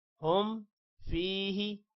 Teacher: ہم فیہ، فا کے بعد یا ہے، اس کو بھی لمبا کریں گے، ہی کو لمبا نہیں کرنا۔